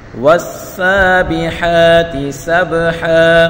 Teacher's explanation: والسابحات سبحا، واو کو سین کے ساتھ ملا کر پڑھیں گے، سین سیٹی والا حروف ہے یعنی تیزی کے ساتھ پڑھیں گے